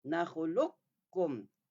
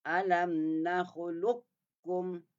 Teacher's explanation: Tu masuk qaf kepada kaf. Qaf dengan kaf ni adalah makhrajnya hampir. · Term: idgham mutaqaribain